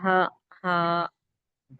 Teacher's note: ہا کا مخرج حلق کا اندرونی حصہ